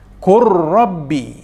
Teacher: bunyi atau sebutan huruf lam dimasukkan ke dalam huruf ra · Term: idgham